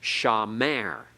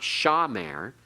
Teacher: we Accent on the last syllable it's not accented on the first it's not shamer everyone say that together if we accented on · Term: milra